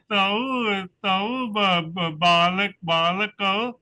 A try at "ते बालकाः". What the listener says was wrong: Te balakaha. Very good.